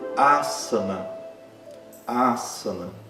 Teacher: Vejam que não é asana, não é parecido com Z, é como se fosse o nosso S duplicado. · Não é parecido com Z. É como se fosse o nosso S duplicado. Mas em sânscrito não precisa dessa duplicação do S, porque ele sempre tem o mesmo som, seja no início da palavra, seja no meio da palavra, mesmo entre duas vogais.